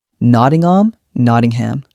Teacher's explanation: Notice how the ham becomes soft and quick.